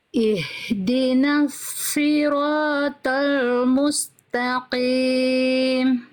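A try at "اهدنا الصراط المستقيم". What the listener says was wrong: huruf shadnya sudah lebih baik tapi masih belum maksimal terus huruf tho sama angkat pangkal lidahnya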